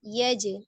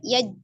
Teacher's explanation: qalqalah ya, yang dipantulkan ketika dia di wasol atau di tengah, dia sugro saja, kecil saja ya. Alam yaj'al, yaje, seperti itu, tidak yaj, gitu ya.